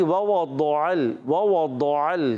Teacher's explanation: دونوں واو جو ہے ہونٹوں کی گولائی سے ادا ہوں گے. اور ضاد ادا ہوتا ہے زبان کا بغلی کنارہ.